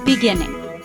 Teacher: 3 syllables. Stressed syllable is second. Beginning.